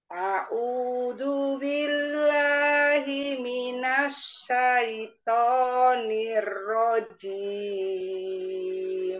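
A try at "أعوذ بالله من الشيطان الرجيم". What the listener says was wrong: Nah, kalau to-nya kurang tinggi pasti turun. Ini turun. Jadi syaitonnya kita latih coba ya. A'udzu billahi minasyaitoni. Syaitoni. Coba Bu, syaitoni. Syaitoni.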